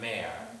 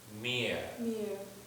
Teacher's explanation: It's a closed e vowel, not an open e.